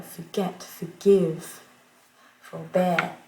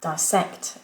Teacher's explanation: beaucoup de mots en anglais, de verbes en anglais, vont être accentués sur la deuxième syllabe.